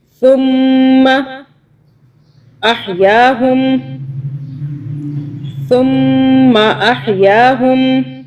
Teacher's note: میم کے اوپر تشدید ہے، میم پہ ہم 2 سیکنڈ کے لیے رکیں گے، غنہ کریں گے اور سا کو سافٹلی ادا کریں گے۔